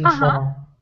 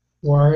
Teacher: your mouth is more horizontal with far. You've got a wider sound. And war, your mouth is definitely more closed.